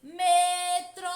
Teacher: Percebam que a sílaba que mais demora a ser pronunciada é tro, metrô. Portanto, tro é a sílaba tônica.